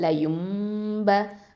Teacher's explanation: இக்கலாபு சட்டம், மாற்றுதல் அப்படிங்கிற அந்த சட்டம் வருது. அப்போது நூனை மீமா மாற்றணும். ஏன்னா நூனுக்கு அடுத்ததான், நூன் சாக்கினாக்கு அடுத்ததான் ப வந்திருக்குது. அப்போது லயும்ப அப்படின்னு எஹ்ஃபாவும் கொடுக்கணும்.